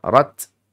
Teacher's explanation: di situ bacaannya memang ada efek bunyi setengah harakat saja dalam rangka untuk membedakan antara ta maftuha dengan huruf tho. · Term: ta maftuhah